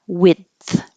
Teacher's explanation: This is the same as depth in that there's going to be a stopping of the airflow and then releasing the airflow for the TH.